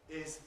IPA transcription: ɪz